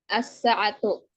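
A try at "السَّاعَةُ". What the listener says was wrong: Panjangi sinnya.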